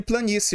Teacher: Primeiro eu tenho o i, que é semivogal, tá? E depois eu tenho o e que é uma vogal. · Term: ditongo crescente